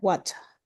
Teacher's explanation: The R sound at the end of words is often omitted. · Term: R dropping